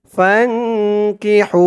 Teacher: হার আওয়াজটা গলার ভিতর থেকে চিকুন হয়ে বের হবে